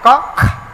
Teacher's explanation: ক খ। কয়ের সঙ্গে একটা হাওয়া বেশি দেয়